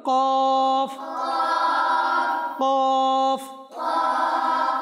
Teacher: জিহ্বার গোড়া তালুর নরম অংশ থেকে উচ্চারিত হয়